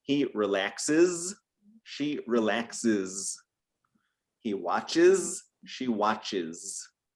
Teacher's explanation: And then finally, which typically occurs with verbs that end with the S sound, like relax or watch, we add an extra syllable here. We add an extra sound and it sounds like is, with again a Z sound. Is, like he relaxes, she relaxes.